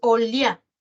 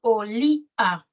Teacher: La cerrada tiene mayor fuerza de voz. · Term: hiato acentual